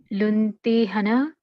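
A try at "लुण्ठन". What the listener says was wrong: Where is E? There is no E there. Lunathana. Tha.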